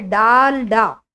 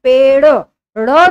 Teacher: अगर हम उच्चारण करें पेड़, इसका उच्चारण डमरू के डा जैसा हो रहा है, यानी ये डा है, डाल डा, जबकि इसका उच्चारण हम पेड़ ड़ जैसा उच्चारण कर रहे हैं। ड़ जैसा जब उच्चारण हो रहा है तो हमारी जीभ जो है ऊपर टकराकर पलट रही है, इस तरह से इसका उच्चारण होगा, इसलिए इनको उच्छिप्त व्यंजन या द्विगुण व्यंजन कहा गया।